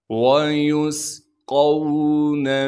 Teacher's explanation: فیہا، واو کو بغیر کھینچے پڑھیں گے، یا کو سین سے ملائیں گے اس لیے کہ سین ساکن ہے، سین کی سیٹی ادا کریں گے ، قاف کو موٹا کر کے پڑھیں گے اور قاف کو